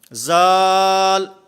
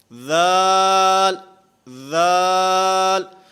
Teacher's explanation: ذال میں اس کی ادائیگی میں زبان دانتوں سے ٹکراتی ہے، دانتوں کے ساتھ زبان لگتی ہے، اور پھر خصوصاً بچے جس وقت اس کو پڑھتے ہیں تو وہ پڑھتے ہیں زال، یہ زال نہیں ہے، ذال، ذال۔